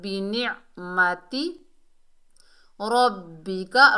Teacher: را کو موٹا پڑھیں گے، تشدید والے حرف کو مضبوطی اور جماؤ سے پڑھیں گے۔